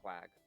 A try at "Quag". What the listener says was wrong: Well, you can call it Quag, but it's pronounced technically in the Germanic sort of tone. It's sort of Vog. Yes, think of KVAG as opposed to QUAG.